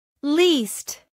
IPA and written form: liːst (Least)